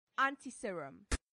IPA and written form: ˌæntɪˈsɪərəm (antiserum)